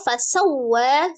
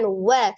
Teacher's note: fasawwa waw tasdid hukumnya nabar ditinggikan, ditekan wa.